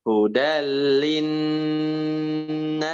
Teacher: Nah, sekarang dari linnas. Linnasnya ditahan dulu ya, Prof ya, lebih lama